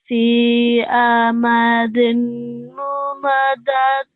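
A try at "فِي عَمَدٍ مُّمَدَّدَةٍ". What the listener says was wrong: Okay, so again here, when you join this dal with the mim mushaddad, it will become fi amadim mumaddada. It won't be amadin.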